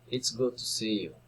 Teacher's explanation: Exclamatory sentences, falling intonation.